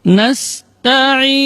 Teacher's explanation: Ta, ujung lidah berada di usul sanaya, di pangkal gigi seri atas. Dengan posisi lidah istifal, yaitu posisi lidahnya berada di bawah, tidak terangkat. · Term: huruf tarqiq